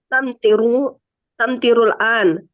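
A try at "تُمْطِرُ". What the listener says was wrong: Tum, bukan tam.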